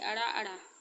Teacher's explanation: जिन व्यंजनों के उच्चारण में जीभ ऊपर उठकर मूर्धा की ओर स्पर्श करती हुई तुरंत नीचे गिरती है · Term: उत्क्षिप्त